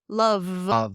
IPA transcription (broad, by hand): lʌv